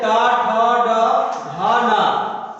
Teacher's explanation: टा वर्ग में आ जाइए ट ठ ड ढ न ये किससे बोला जाएगा? मूर्धा से।